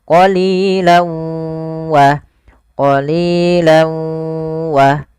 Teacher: awalnya qalilan, karena ketemu waw masuk ke huruf waw, tanwinnya menjadi qalilaw. Jadi ganti w, karena dia huruf waw itu w identiknya.